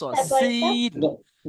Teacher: প্রথমটা সিটির মতো আওয়াজ, দন্তে স, সিন।